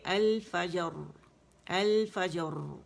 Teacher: فجر بھی ادا ہو گیا, قلقلہ بھی, اور را کی آواز بھی پرومیننٹ آئی. تو ایسا نہیں ہوا کہ میں نے فجر یا غائب کر دیا یا میں نے اس کو پاز دے کے ادا کیا.